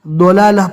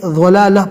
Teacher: عربی قراء خصوصاً ضلالہ پڑھتے ہیں دال کی شکل میں، ان کا یہ پڑھنا بھی صحیح ہے، اور مصری قراء اس کو ذال کی شکل میں ضلالہ پڑھتے ہیں، تو ضلالہ پڑھنا بھی صحیح ہے۔